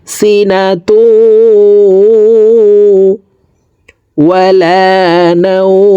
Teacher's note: তো এখানে ইদগামে বা গুন্না, দেখুন তানউইনের পর ইদগামে বা গুন্নার 4 হরফের একটি হরফ ওয়াও আসছে, এই কারণে এই দুই পেশওয়ালা তাটি তাসদীদওয়ালা ওয়ার সাথে গুন্নার সহিত মিলাইয়া পড়ব